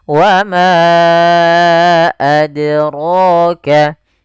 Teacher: Rohnya tebal, 2 harakat mad tabi'i.